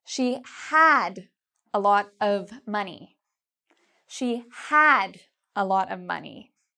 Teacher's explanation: I would stress the word had